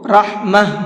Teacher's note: من لدنک اس طرح سے، رحمہ را کو پر کر کے پڑھیں گے، اور جب میں نے یہاں پر آیت کی ہے تو یہ تا ہے، اس تا کو ہا بنا کر کے پڑھا ہے